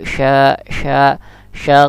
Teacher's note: Terus lagi, ini sya, tengah lidah bertentangan dengan langit-langit, dan dia pun juga termasuk lokhawah atau berlalu.